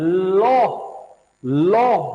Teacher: पार्श्विक का मतलब क्या होता है, लॉ, लॉ जब हम बोलते हैं ना, तो जीभ बेटा हमारी ऊपर को चली जाती है और जीभ के दोनों साइड से नीचे से हवा बाहर निकल जाती है